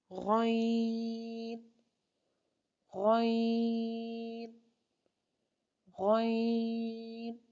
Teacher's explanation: गौइन गौइन भी 3 हरफी हरूफ में से हैं, यानी कि इसको 2 गुना लंबा करते हैं और ये मोटे हरूफ में से हैं। यानी कि गौइन को अदा करने के लिए जुबान के पिछले हिस्से को ऊपर की तरफ बुलंद करते हुए मोटी आवाज में इसको अदा करें